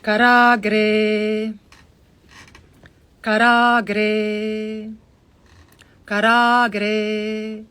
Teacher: Dirgha means long. So the first a is a hrasva a, it's a short a. The second a is a long a. So when there's a line on top, you open your jaw. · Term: dirgha a